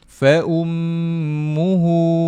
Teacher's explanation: boleh dengungkan dua harakat pada huruf mim ini